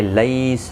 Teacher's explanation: لی یا لین ہے، تھوڑا نرمی کے ساتھ کھینچ کر ادا کریں گے